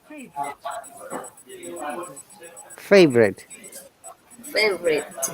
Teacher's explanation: There is a schwa sound after V.